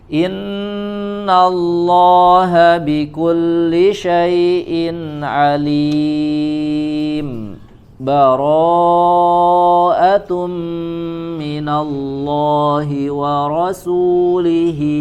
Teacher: Berhenti pada alim di ayat terakhir surat Al-Anfalnya, tapi tidak disertai dengan mengambil nafas, langsung baca ke setelahnya